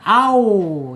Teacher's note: Wa asyafatain ya. Dua bibir ya. Bibirnya dikatupkan tetapi prosesnya dari belakang.